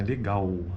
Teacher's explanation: A acentuação, a tônica dessa palavra está na segunda sílaba, né? Legal, ao. Sendo que esse E do le é que é a acentuação pretônico.